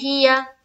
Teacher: یا کے اوپر زبر کی حرکت ہے, زبر کو جلدی پڑھیں, تھوڑا بھی نہ کھینچے